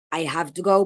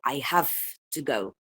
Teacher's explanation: So, pasa en algunos casos medio particulares, creo que uno puede más o menos decidir, ponerle dónde ubicar esto en una transcripción, pero es cuando, por ejemplo, la voiced labiodental fricative se asimila a la voiceless labiodental fricative cuando le sigue una voiceless consonant. Por ejemplo, I have to go pasa de I have to go to I have to go. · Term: phonemic regressive assimilation of voice